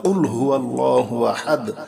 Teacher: কফ অবশ্যই গলার ভিতর থেকে উচ্চারণ করতে হবে